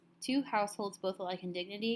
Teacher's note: it goes unstressed stressed unstressed stressed that means ten syllables are in every single line